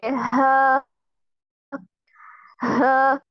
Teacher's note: हम जुबान की जड़ को हलक की तरफ दबाए बगैर बारीक और रगड़ खाती हुई सांस निकाल रहे हैं। ठीक है, जुबान को हम पहले जुबान की जड़ को हलक की तरफ हम दबाएंगे नहीं, सिर्फ हम क्या करेंगे, पीछे से रगड़ खाती हुई सांस निकालेंगे।